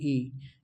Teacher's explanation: छोटी इ बोलेंगे तो संवृत स्वर ध्वनि कहलाएगी। लेकिन ये वृत्ताकार मुंह नहीं खुलता है। इसमें कम खुलता है।